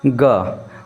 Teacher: जैसे आप ग बोलेंगे ना हमारे स्वर तंत्र में क्या हो जाता है झनझनाहट होता है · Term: सघोष